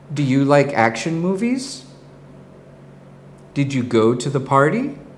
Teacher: focus on how your voice rises at the end of the question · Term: rising inflection